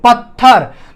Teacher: बोलते समय आपके मुंह से दोनों महाप्राण ध्वनियों का उच्चारण हो रहा है